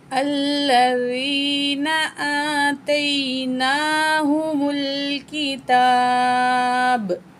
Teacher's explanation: लाम मुशद्दद है, इस वजह से हमने हमज़ा के साथ मिला के पढ़ना है और लाम में थोड़ी सी सख्ती करनी है